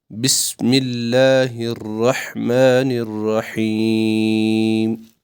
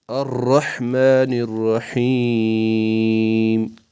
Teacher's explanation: ہا جو ہے یہ ہمیں وسط حلق سے نکالنا ہے